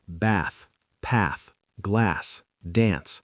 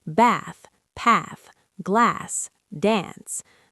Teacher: The vowel is much further back in the mouth. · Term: long back A sound